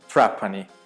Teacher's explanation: Também tem o R retroflexo na Sicília. Então, por exemplo, tem uma província, né, uma província na Sicília que é Trapani.